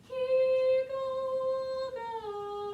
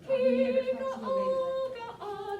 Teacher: I am putting what's called a glottal in between the ga-o and the ga-ah.